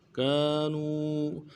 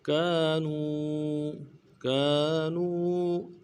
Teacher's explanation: کاف کے بعد الف مدہ ہے، ایک الف دال میں کھینچیں گے